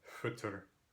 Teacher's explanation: once again, the I has fronted the O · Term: I umlaut